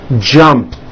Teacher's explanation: Of course, the word is spelled with an ed ending. It's just pronounced as a T.